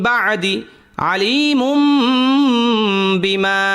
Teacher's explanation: তো নুন সাকিনের পরে বা ইকলাবের হরফ, তো ইকলাবের হরফ আসার কারণে এই নুন সাকিন অথবা যদি তানবিন থাকতো তানবিনের উচ্চারণটাকে আমরা মিম দ্বারা বদলায় পড়তাম